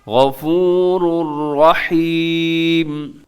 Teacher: غفور الرحیم، یہاں پہ بالکل نون کا تنوین کا ذرا سا بھی ساؤنڈ، ذرا سی بھی آواز نہیں آئے گی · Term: ادغام بھی بغیر غنے